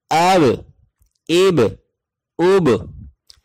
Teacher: यहां पर थोड़ा सा कलकला होगा यानी आवाज पलट कर आएगी